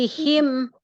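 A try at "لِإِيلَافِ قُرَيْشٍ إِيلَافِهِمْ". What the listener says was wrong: V. Jangan pi. Jangan bibir atasnya, bibir bawahnya jadi tertutup. Nah, yang ketemu dengan bibir bawah itu gigi bagian atas. V ya, seperti itu.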